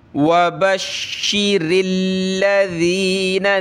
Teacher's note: और रा को लाम के साथ मिलाना है और रा पे जो है ज़ेर है तो पतला करेंगे। लाम को हमने सख्ती से पढ़ना है तशदीद की वजह से।